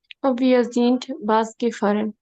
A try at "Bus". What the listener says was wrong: বিয়ে জিন বুস গেফারেন, বাস না, এটাকে আমরা বলবো হচ্ছে বুস।